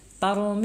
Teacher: tarmihim itu salah ya jangan lupa tebal dulu ya syafawi ya bibirnya tertutup tetapi masih ada udara yang mengalir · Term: Ikhfa Syafawi, ikhfa syafawi